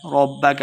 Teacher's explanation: ربک با مشددہ را کو با کے ساتھ ملا کے پڑھیں گے